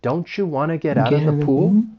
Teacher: I'm going to reduce want to to wanna.